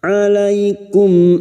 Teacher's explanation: mim sukun bertemu Hamzah mim sukun dibaca jelas tanpa mendengung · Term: Idhar syafawi